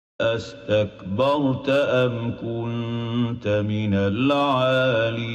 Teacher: So astakbarta, the second hamza has fallen out.